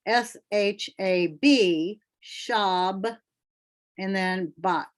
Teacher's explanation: So basically the B is attached to both syllables. So that's why we get the spelling for Shabbat with 2 B's. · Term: dogish